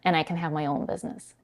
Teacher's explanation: And then the word and, she's dropping the final d